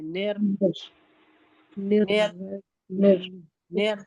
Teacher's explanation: نون کو ہمیں رو سے ملانا ہے